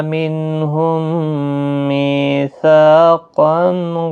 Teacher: میم ساکن کے بعد دوسرا میم آیا ہے، یہاں پر ادغام شفوی ہوگا، غنہ کے ساتھ پڑھیں گے۔ · نون ساکن کے بعد ہا اظہار حلقی ہوگا۔